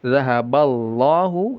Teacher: Lafaz jalalah dibaca tebal lamnya. Zahaballahu ya jangan terpengaruh pada ee yang sebelumnya ya.